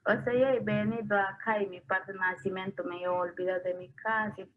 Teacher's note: And the third vowel, which is the stressed vowel, is around 150. So the first vowel is longer than the stressed vowel, which is totally unexpected in Spanish. · we have unexpected prominence in word initial position, in the first vowel